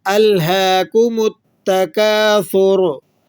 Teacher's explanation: تو سا کے بعد جو را ہے اس کے اوپر پیش ہے، تو را کو موٹا بھی کریں گے وقف کی حالت میں